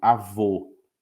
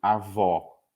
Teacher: masculino avô com o fechado e o feminino avó com o aberto